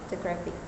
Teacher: in the word photographic, the stress falls on the first syllable